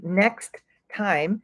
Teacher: Next ends with a T. Time starts with a T. So we say next time, as if it is one word. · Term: connected speech